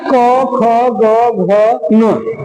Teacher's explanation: कंठ से होने का काम करती है इसलिए कहता है कि जीभ का पिछला भाग कोमल ताल को स्पर्श करता है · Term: कंठ वर्ण